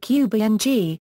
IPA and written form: ʊ.ˈbɛŋ (ubíng)